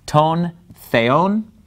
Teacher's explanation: the word for God, theon, the accent is on the second syllable, that's where the mark is.